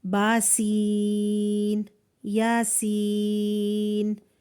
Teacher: سین 3 counts تھا، ہم نے اس کو کھینچا اور با اور یا چھوٹے تھے ان کو چھوڑ دیا